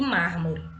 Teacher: Então, temos a última, a penúltima e a antepenúltima, que é o K, por isso que ele é proparoxítono. Mármore, percebam aí o mar, que é pronunciado com mais intensidade, mais força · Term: proparoxítona